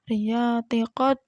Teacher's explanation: Riyati qad, nya ini namanya qalqalah sugro karena ada huruf qalqalah yang matinya asli